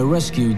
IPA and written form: ˈreskjuːd (rescued)